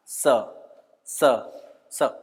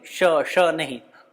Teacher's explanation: स के उच्चारण के समय भी हमारी जीव कहाँ लगनी चाहिए? दांत में।